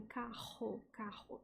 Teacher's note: um som não retroflexo, né? parecido como uma fricção, como em carro, carro.